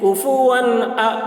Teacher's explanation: तनवीन को ज़ाहिर करके बिला गुन्ना के जल्द पढ़ेंगे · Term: इज़हार